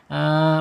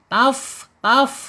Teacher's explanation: Asyafatainnya yaitu ujung gigi seri atas ya menyentuh perut ya, perut bibirnya yang bawah ya. Jadi bukan perut bibir ujung tapi bawahnya.